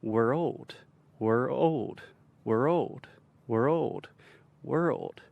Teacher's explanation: you can even add a stress to the second syllable